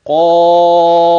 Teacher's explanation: الحرف الثاني ألف، الحرف الثالث فاء، يبقى قا مفتوحة بعدها ألف ممدودة بعد الألف فاء ساكنة، يبقى حرف مد جاء بعده ساكن وهذا الساكن غير مشدد، إذن سأمد حرف المد وهو الألف ست حركات ويسمى مد لازم